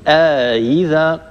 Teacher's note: آيذا طبعا عندنا همزتان من كلمتين من كلمة في كلمة واحدة ولهما مفتوحة وثانيتهما مكسورة. قرأ قالون رحمه الله وأبو عمرو رحمه الله بتسهيل الهمزة الثانية مع إدخال ألف بين الهمزتين هكذا آيذا. أما ورش رحمه الله فقرأ بتسهيل الهمزة الثانية من غير إدخال ألف بين الهمزتين.